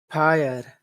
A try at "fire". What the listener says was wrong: Fire. Don't push your lips together. Your lips do not touch. Fire. Just your top teeth and your bottom lip.